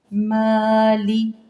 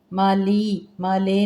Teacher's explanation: مالی لام زیر لی، مالے نہیں پڑھنا باریکی کے ساتھ